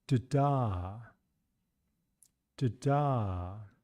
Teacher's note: We can really hear that this first syllable is shorter and lower in pitch.